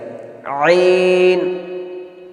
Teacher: ان دونوں میں بھی فرق یہ ہے، اس کی آواز باریک ہوتی ہے، اس کی آواز پر پڑھی جاتی ہے۔ ذو، عین، عین کی آواز حلق کے بیچ والے حصے سے نکلتی ہے